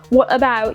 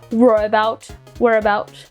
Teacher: sometimes you drop the T's, and the words kind of sound like they are R sounds